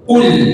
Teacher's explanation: Qul enggak ada angin, bersih.